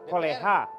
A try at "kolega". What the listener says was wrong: Kolega, kok koleha? G dibaca,